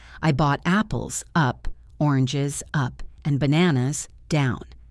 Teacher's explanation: The rising tone says more is coming. The falling tone says I am done. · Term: list intonation